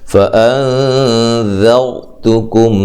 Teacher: نون ساکن کا اخفا مع الغنہ ہے